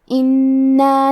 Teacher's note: کلمت انا میں حرف نون پہ تشدید ہے تو ہمیں 2 حرف کے برابر نون کو پڑھنا ہے